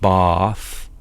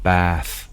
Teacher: in the southwest, they have this ae vowel. So, but they lengthen it. So, they don't make it bath, they make it bath.